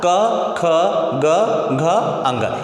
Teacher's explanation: अ और आ, क से लेकर अंग तक, ह और विसर्ग, इनका उच्चारण स्थान क्या होता है, इनका उच्चारण स्थान कंठ से होता है।